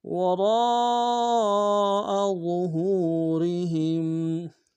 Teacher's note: وراء میں را کو موٹا ادا کریں گے، را کے ساتھ الف مدہ ہے، مدہ کے اوپر مدہ اصلی ہے، کم سے کم تین انداز میں کھینچیں گے، حمزہ کو نم سے ادا کریں گے۔